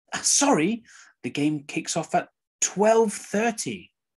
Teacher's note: So the sorry is stressed and the 12:30, the correct information is stressed.